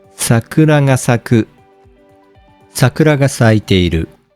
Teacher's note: basically you keep the high pitch from the beginning to the end of the phrase · in Heiban words, there is no downstep. For this reason, you don't need to change the pitch from the beginning to the end. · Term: Heiban accent